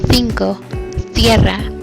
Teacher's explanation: Peninsular Spanish uses the voiceless dental fricative th. In this articulation, the apex advances to the upper teeth and the blade is not used.